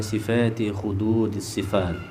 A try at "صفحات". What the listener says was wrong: صفحات ولا صفات هنا؟ صفحات صح؟